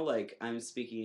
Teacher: right now it's very high and in the back of my throat and my soft palate is raised